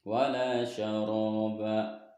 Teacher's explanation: Wala syaraba, nah di sini ada mad asli atau mad tabi'i karena huruf lam berharokat fathah bertemu alif, maka cara membaca dipanjangkan 2 harokat